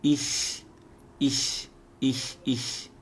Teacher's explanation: a palavra ish em alemão, depois do ish você faz um chiadinho suave